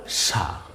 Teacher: এখানে দন্তস্বটাকে আমরা যখন পড়ব তখন দন্তস্বয়ের উচ্চারণ কিন্তু জিহ্বার আগাটা দাঁতের গোড়া থেকে লেগে উচ্চারিত হয়